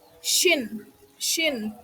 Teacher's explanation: syin bertemunya ujung lidah dengan langit-langit lunak lalu meninggalkan aliran udara yang sempit.